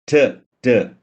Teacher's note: Tip of the tongue വന്നിട്ട് ഇത് teeth റിഡ്ജിൽ നാവ് പ്രസ് ചെയ്തിട്ട് ഒരു ബ്ലോക്കേജ് ഉണ്ടാക്കുന്നു, ട് ട് എന്നൊക്കെ പറയുമ്പോൾ.